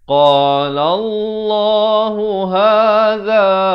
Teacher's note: za di hujung lidah